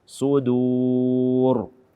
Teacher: Ini ingat bahwa dal ini kaum muslimin dan muslimat yang dimuliakan oleh Allah Azza wa Jalla, dia terdapat setelah huruf sad yang dia adalah huruf tebal. Jangan sampai kita juga menebalkan dal yang dia adalah huruf tipis.